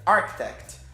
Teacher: O stress está na primeira sílaba, que é architect